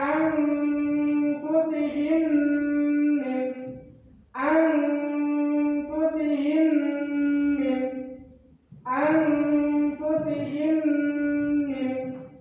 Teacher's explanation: huruf dari mim mati itu dileburkan kepada huruf mim selanjutnya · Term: idgham mimi